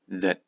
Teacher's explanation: I believe that cities that this T disappears and the vowel is short should subsidize.